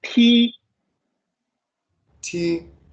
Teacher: As if you pronounce a T, but the first tone.